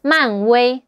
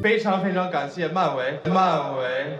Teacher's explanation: Marvel is translated as 漫威, the first tone, the flat tone, but he pronounced it as 非常非常感谢漫威,漫威, which is the second tone, the rising tone.